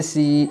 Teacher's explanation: یا مدہ کو ایک الف کی مقدار کھینچ کر پڑھے گے